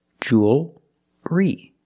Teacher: It's still a dark L. Because you have the L before a consonant. The L is not between vowels.